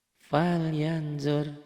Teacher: Ditulisnya ada n-nya, dibacanya tambah eng gitu doang ya. Cuman ditahan. Falyanzur jadi falyan, ininya tambah g gitu loh, gampang ya. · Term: ikhfa